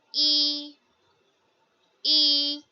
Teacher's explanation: first tone, straight tone